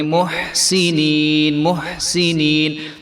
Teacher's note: وسنزيد المحسنين وسنزيد المحسنين جو ہے ہا کی آواز آنی چاہیے، اس کو ہم نے موٹا محسنین نہیں کرنا